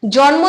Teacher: যখন আমরা জন্ম উচ্চারণ করছি তখন ন এর সঙ্গে কিন্তু কোন স্বরধ্বনি আসছে না যখনই যুক্ত ব্যঞ্জন ভেঙে ন আর ম আলাদা হয়ে যাচ্ছে তখনই